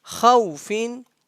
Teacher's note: we don't have that madda sign, I mean that madda letter, and it is lean, so we just make a sound of wow